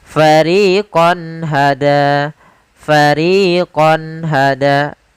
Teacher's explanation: Maka suara qonnya harus jelas, tidak boleh ditahan dengan gunah. Karena izhar adalah menjelaskan, menampakkan suara nun sukun dan tanwin dengan jelas tanpa disertai ghunah.